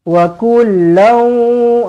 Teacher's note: Tanwin bertemu dengan huruf waw. Dengung muncungkan bibir ya.